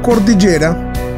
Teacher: al pronunciar la subimos el tono de la voz ejemplo en la palabra cordillera si la pronunciamos notaremos que subimos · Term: acento